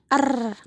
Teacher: fonem er yang diartikulasikan oleh ujung lidah menyentuh gusi sebentar lalu dilepaskan lagi lalu menyentuh lagi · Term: getaran